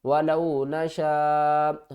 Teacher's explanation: وَلَوْ نَشَاءُ، وَلَوْ نَشَاءُ واو زبر وا، لام واو زبر لو، ولو نون زبر نا، ولونا شین الف مد زبر شا، بڑی مد ہے، اس کو ہم نے 5 الف کی مقدار کھینچ کر پڑھنا ہے۔